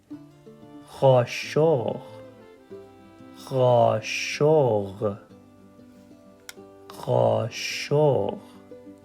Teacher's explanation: it's kind of a sound that comes from the back of your throat a guttural sound